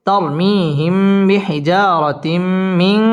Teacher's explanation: তবাই এক আলিফ টেনে পড়তে হবে বিহিজারা র পুর হবে বিহিজারাতিম তানবিনের বামে মিম মিম ইদগামে বা গুন্নার হরফ গুন্না সহ মিলিয়ে পড়তে হবে